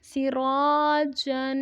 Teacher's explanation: را حروف مدہ ہے، ایک الف کی مقدار تک لمبا کریں گے اور را پہ زبر ہے تو اس لیے را کو موٹا بھی پڑھیں گے. جیم پہ غنہ کریں گے، دو زبر ہے، تنوین ہے، غنہ ہوگا.